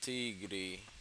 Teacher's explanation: Tigre no português, teoricamente, não vai ter Aspiração.